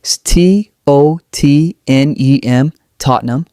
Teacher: The middle ham becomes nem, almost silent.